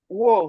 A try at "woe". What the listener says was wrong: So, you said woes, it's not woes, it's woe.